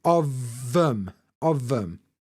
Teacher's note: It's more like a V, actually. But so of ends in this V sound. Of. And that is becoming the first sound of them.